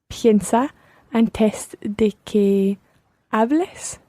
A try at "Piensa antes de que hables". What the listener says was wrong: Antes, just watch the stress there. It's antes. Piensa antes de que hables.